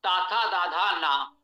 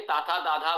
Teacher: ये तवर्ग जो है इसका उच्चारण स्थान दंत है। आप देखिए ताथा दाधा बोलिए, जिह्वा दांतों को स्पर्श कर रही है।